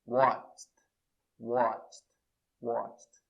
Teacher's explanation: E a pronúncia watch não tem vibração, então o som vai ser de T.